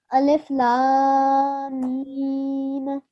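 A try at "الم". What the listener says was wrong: Okay, remember here, it's 4 seconds, but also you have to hold on the meme mushaddad for 2 seconds. This is meme guna. So alif lam mim.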